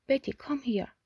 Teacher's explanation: in official speech it takes a falling tone